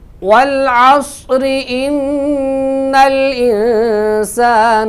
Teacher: اور اگر ہم اس کو ملا کے پڑھیں والعصر ان الانسان، تو پھر چونکہ را کے نیچے زیر ہے تو ملا کے پڑھنے کی صورت میں را باریک ہوگی